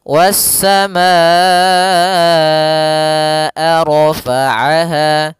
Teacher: Wassamaa, baru dilepaskan a-nya. Kita panjangkan dulu ma-nya baru bacaan ke a. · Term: mad wajib muttasil